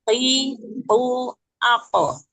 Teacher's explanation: Huruf qaf makhrajnya pangkal lidah keluar dan menempel di langit-langit yang lunak.